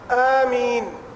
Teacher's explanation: اس کو زیادہ لمبا نہیں کرنا، ایک الف